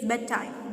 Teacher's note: When you say it together, it is bedtime. That d sound is dropped.